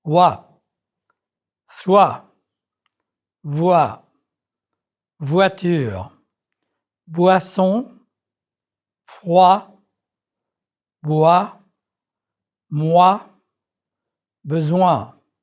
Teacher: When the vowel sound oo, as in vous, occurs before another vowel, the sound wa is produced.